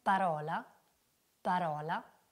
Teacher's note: Sonora era la B La Sorda invece la p per cui la P verrà emessa nello stesso modo della B L'unica cosa differente saranno le corde vocali che in questo caso saranno inattive · sentiremo che la P è soltanto un'esplosione e che non stiamo usando le nostre corde vocali